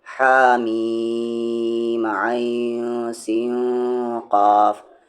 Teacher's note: یہاں پر عین کو پڑھتے ہوئے اور سین کو پڑھتے ہوئے اخفا ہوگا۔